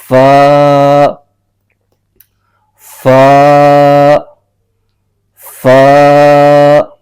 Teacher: اوپر کے دانتوں کے اندرونی کنارے اور نچلے ہونٹ کے تر حصے سے ایک حرف ادا ہوتا ہے. جو دانت ہیں ان کا جو کنارہ ہے نچلے ہونٹ کے تر حصے کو ٹچ کرے گا اور وہاں سے یہ حرف پڑھا جائے گا فا فا فا.